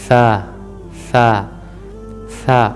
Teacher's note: سامنے والے جو دانت ہیں آپ کے اوپر والے، ان زبان کی نوک وہاں پہ جا کے رکھیں گے، تھوڑی سی آگے کو باہر کی طرف نکال کے